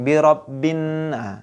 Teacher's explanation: Jadi alif lamnya tidak boleh dibaca. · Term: idgham syamsiyah